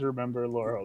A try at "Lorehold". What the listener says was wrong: It sounds like you're saying Lorehole.